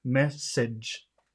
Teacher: yes, you're missing that D sound earlier, which is a really important sound. When you have that G, a lot of times it's like a combination of DCH.